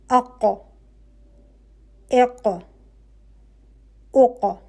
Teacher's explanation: آپ کی ق کے لیے آپ کی زبان کی جڑ اوپر نرم تالو پہ لگ رہی ہے، بالکل کونے میں، اینڈ پہ، جہاں سے آپ کا حلق کے فوراً بعد۔ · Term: حرف ق